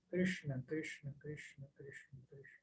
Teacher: é levemente retroflexo é um som retroflex então a gente deveria assim enrolar a língua um pouquinho